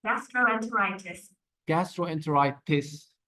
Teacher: the t is very clear in the British but the Americans they like to play with the T